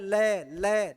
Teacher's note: है बगल तो जीवा दोनों तरफ हवा दौड़ती है ल ल ल का उच्चारण करते तो स्वास वायु गालो की तरफ फैलती है इसलिए इसे क्या कहा जाता है पार्श्विक वर्ण कहा जाता है